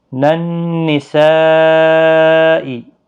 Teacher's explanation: نون مشدد پر غنہ ہوگا، یہاں پر مد متصل ہے، اس کو 4 الف کے برابر کھینچ کر پڑھا جائے گا